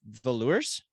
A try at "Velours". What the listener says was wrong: Silent S on the end. Velours. It's French. We say velours.